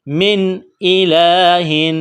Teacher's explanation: نون ساکن کے بعد حمزہ ہے، حروف حلقی ہے، تو نون ساکن پر غنہ نہیں کریں گے ، آواز ناک میں نہیں چھپائیں گے، کڑا زبر ہے، ایک